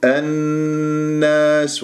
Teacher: والنون مشدد الغنة أكمل ما تكون